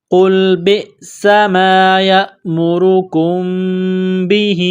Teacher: میم ساکن کے بعد با ہے تو یہاں پر اقلاب کریں گے، غنہ کریں گے، آواز ناک میں چھپائیں گے · را کے اوپر پیش ہے، را کو موٹا کرنا ہے